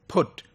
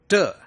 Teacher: when I say put you see that my the sound of the the letter P is aspirated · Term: aspirated sound